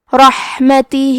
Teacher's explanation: آخری میں ہا کے نیچے کھڑی زیر ہے، یہاں حکم ہے مد صلہ صغرا تو ہم اپنی آواز 2 مد کے برابر لمبی کریں گے